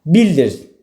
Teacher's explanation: Bildir zaman zərfi kimi düşünsəm, biz bildir Londona getmişdik. Bildir. Burada vurğu əvvələ düşür.